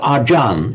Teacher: The reason it comes ajan is because the a stays the same. A ch between vowels becomes a J sound.